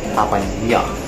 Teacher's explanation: the accented letter A is more nasalized as compared to the regular one